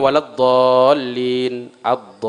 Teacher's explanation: Lazimun harus 6. Nggak boleh kurang, lebih-lebih dikit. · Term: mad lazim